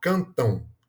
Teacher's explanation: Cantão Então apesar de ter um M ali no final eh acaba que a gente pronuncia como se fosse um encontro de duas vogais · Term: tongos Nais